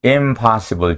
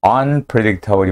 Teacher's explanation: 반면에 on을 붙이게 되는 경우는 unpredictable이 맞고 um으로 비음 동화가 일어나면 이번에는 틀립니다. 첫 번째 impossible에서는 전미사 in이 im으로 변하지만 두 번째 unpredictable에서는 비음 동화가 일어나지 않지요.